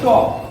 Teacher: চ হচ্ছে অল্প প্রাণ অঘোষ বর্ণ